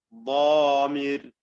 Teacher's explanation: ضامر ഇത് അശദ്ദു തഫ്ഖീമൻ മിൻ ഗാലിബ്